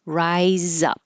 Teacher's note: So starting I and rising. Rise up. The Z will connect. Rise up. And that little mark is there to remind you to just hold and not release up.